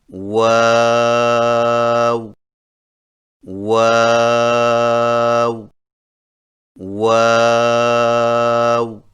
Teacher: واؤ کی ادائیگی میں ہونٹوں کو گول کرتے ہوئے اوپر کی جانب کھول کر درمیانی سی مد کریں اور پھر سے ہونٹوں کو چونچ کی مانند گول کرتے ہوئے باریک آواز میں پڑھیں، یعنی واو واو واو۔